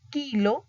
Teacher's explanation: se une el dorso de la lengua con el velo del paladar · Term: velares